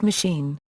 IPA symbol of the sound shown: i